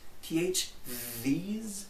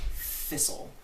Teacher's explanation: So we have voiced th, these, and we also have unvoiced th, like thistle. The only difference between th and th is whether or not your vocal cords do anything.